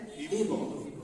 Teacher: বা সাকিনের কলকলা প্রতিধ্বনি সৃষ্টি করে